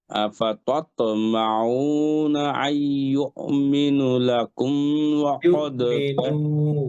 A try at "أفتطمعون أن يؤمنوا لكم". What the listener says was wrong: নুতে মাদ আছে, أفتطمعون أن يؤمنوا لكم